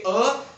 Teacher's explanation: जब हम बोलेंगे अ तो ये कंठ्य ध्वनि है अ